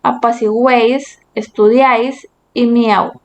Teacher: Vemos que se unen tres vocales en una misma sílaba en los tres ejemplos. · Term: trictongo